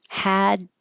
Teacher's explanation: so your tongue goes up for the D, hadn't, and make the n noise